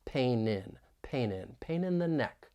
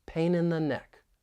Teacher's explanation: we can link the final consonant sound in pain with the beginning vowel sound in in and this can be a bit challenging linking a final n